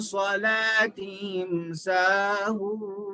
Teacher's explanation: سا الف زبر سا، الف مدہ ہے، ہون واو مدہ ہے، کھینچ کے پڑھنا ہے